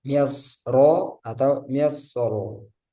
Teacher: Kata misr di surah Yusuf dibaca tafkhim karena berharokat fathah. Jadi meskipun wasal ataupun wakof di sini tetap dibaca tebal.